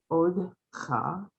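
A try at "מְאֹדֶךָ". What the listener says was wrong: so there's more vowels going on here than you are pronouncing. So you have the mem.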